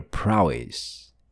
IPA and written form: ˋpraʊɪs (prowess)